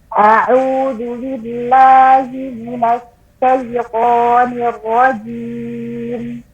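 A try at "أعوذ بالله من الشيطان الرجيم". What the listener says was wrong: Sama seperti Ustazah Erni tadi, ar-rajim jangan terlalu cepat. Ar-rajim. Ya, jangan terlalu buru-buru.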